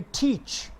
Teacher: और जो च की आवाज़ आ रही है, यहाँ देखें सी एच है, लेकिन यहाँ टी के साथ ये श की सिंबल लगाई गई है. ट और श की सिंबल मिलाएं तो ये दोनों च की आवाज़ निकालते हैं, तो हम इसे प्रोनाउंस करेंगे टीच.